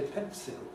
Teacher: Old-fashioned people can even say ‘pencil’ [ˡpensɪl] with an [ɪ]